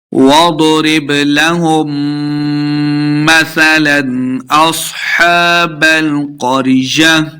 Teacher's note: वाव के ऊपर अपने होंठ गोल करने हैं। जब वाव पढ़ा जाता है तो होंठ जो है वो गोल हो जाते हैं।